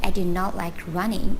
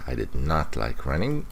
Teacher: Noticed a little bit of stress on not.